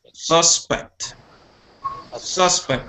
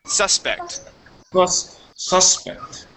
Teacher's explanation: the accent is at the beginning of the word